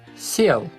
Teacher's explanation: Сел, however, has a soft consonant, s, and ye here stands only for 1 sound, e.